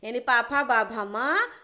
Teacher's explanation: इन के उच्चारण में दोनों होंठ आपस में मिलते हैं